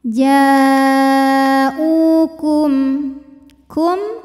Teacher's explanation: mim sukun tetap dibunyikan bunyi aslinya bunyi m dan tidak ditahan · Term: izhar syafawi